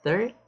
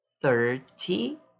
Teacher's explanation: O foco aqui é na última sílaba. 30, o foco aqui é na primeira sílaba.